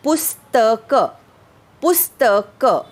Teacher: कारण पु हे अक्षर लघु असले तरी पुढच्या स्त या जोडाक्षराचा आघात मागील लघु स्वरावर येतो. बघा, पुस्तक बोलताना आपण पुवर जोर देतो.